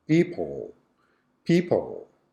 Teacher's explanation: the schwa is on the second syllable